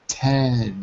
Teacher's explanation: you touch the alveolar Ridge two times